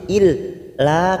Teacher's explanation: kita panjangkan empat harakat karena ada Mad yang bertemu dengan Hamzah di lain kalimat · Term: Mad Jaiz munfasil